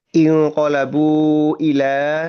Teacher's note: pertemuan bunyi panjang di akhir kata inqalabu bertemu dengan hamzah di awal kata ila di sini berarti kan hukumnya adalah lintas kata tadi ya atau nyeberang batas kata pertemuan antara hamzah dan bunyi panjangnya atau bunyi panjang dan hamzah.